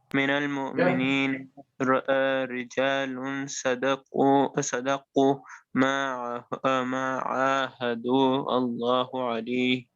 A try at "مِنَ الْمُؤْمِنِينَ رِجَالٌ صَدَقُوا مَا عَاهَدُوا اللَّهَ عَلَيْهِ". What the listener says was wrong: Okay, so now our focus, right, will be on the ikhfa. So make sure that's 2 counts. رجال صدقوا, right? رجال صدقوا. And also you said Allahu, I think. I said Allah alayhi.